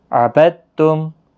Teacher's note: عبدتم با تا کے ساتھ ڈائریکٹ ملے گا کیونکہ مشدد حرف آگے ہے